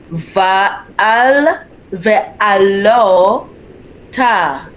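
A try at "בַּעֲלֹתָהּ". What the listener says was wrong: The first letter is a bet, not a vet. A bet. Ba'alota.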